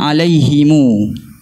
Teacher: Silah ni kita baca panjang pada huruf mim tu dengan kadar 2 harakat.